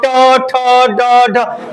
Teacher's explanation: ट को बोलने के लिए जीभ को मोड़ के बोलते हैं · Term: मूर्धन्य